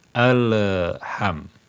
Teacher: sebelum kita menyebut huruf ha lamnya sudah dilepas ya ujung lidah dengan gusinya tadi sudah dipisahkan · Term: Qalqalah